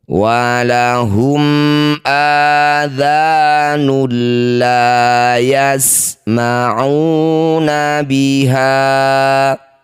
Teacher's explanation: Dumah tanwin bertemu lam, disebut bacaan namanya idgham bila gunnah. Masukkan bunyi dumah tanwin pada lam, tidak usah dengung.